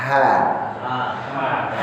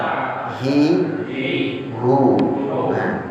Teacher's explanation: Tatkala ha diucapkan dia lebih terbuka lagi.